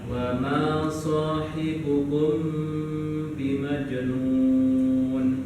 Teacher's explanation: Mim sukun bertemu dengan ba, ditahan cara bacanya. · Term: Ikhfa syafawi